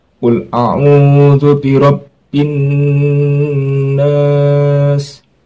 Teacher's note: Ada nun tasdid, dibaca gunnah atau dengung.